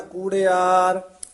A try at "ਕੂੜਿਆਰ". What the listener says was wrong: ਕੂੜਿਆਰ ਦਲੈਂਕੜ ਜਿਹੜੇ ਆ ਨਾ, ਦੀਰਘ ਉਚਾਰਨ ਕਰਨੇ ਆ। ਕੂੜਿਆਰ, ਕੁੜਿਆਰ ਨਹੀਂ ਕਹਿਣਾ।